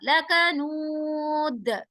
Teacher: दाल पर जब हम आवाज को रोक रहे हैं तो दाल पर कलकला होगा। देखें आयत वक्फ हो रही है, राइट।